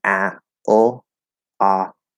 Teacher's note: the half L, which is normally the dark L, is very close in position to ah. It's just a little bit up and a little bit forward, roughly.